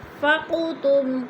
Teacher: ان پہ اخفا ہو رہا ہے، نون ساکن کے بعد فا گیا تو ادھر اخفا، فقتم، قوف حروف قلقلہ میں سے ہے، اس کو ہلا کر پڑھیں گے۔